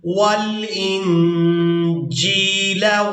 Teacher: جیم کو یائے مدہ کے ساتھ ملاتے ہوئے کھینچ کر ادا کریں گے